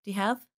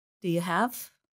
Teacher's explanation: The word you becomes reduced to the sound ya.